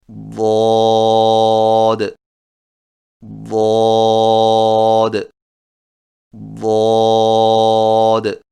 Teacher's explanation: زبان کے موٹے کنارے کو اوپر والی داڑھوں کی جڑ پر آہستہ آہستہ نرمی سے لگا کر خوب موٹی اور دراز آواز میں پڑھیں